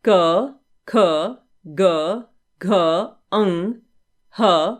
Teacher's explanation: उच्चारण कंठ से होता है उन्हें कंठ कहते हैं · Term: कंठ व्यंजन